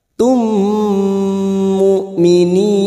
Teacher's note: Mim sukun bertemu mim idgham mimi masuk ke huruf mim berikutnya dan mendengung selama 2 atau 3 harokat.